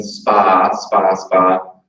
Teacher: the voiceless unaspirated stop